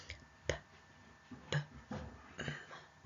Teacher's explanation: The lips are together in those sounds.